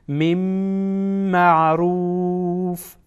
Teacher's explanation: روف را در اینجا پر خوانده میشه